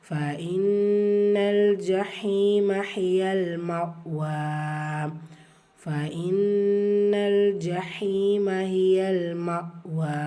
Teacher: ஃபா ஃபத்ஹா ஹம்ஸா கஸ்ரா ஃபாஇ நூன் முஷத்ததா குன்னா செஞ்சு ஓதணும். லாம் சுக்குன் இருக்கு, இணைக்கணும்.